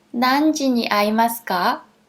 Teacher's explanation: if you up the last tone, it becomes a question as well. So there is no difference between ます or ますか.